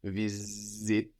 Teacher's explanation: And that's spelled V-I-S-I-T-E. We notice that the S sounds like a Z here, like in English. Visit. That's a Z sound.